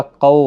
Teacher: قاف حروف مستعلیہ ہے، پور پڑھا جائے گا، قو واولین ہے، تھوڑا نرمی کے ساتھ آدھے الف کی مقدار کے برابر نرمی کے ساتھ کھینچ کر پڑھیں